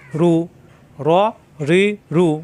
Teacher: জিহ্বার আগার পিঠ উপরে তালুতে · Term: মোটা হরফ